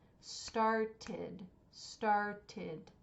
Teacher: order to make it past tense started started two syllables so we are adding an ID sound to that verb because it ends in a t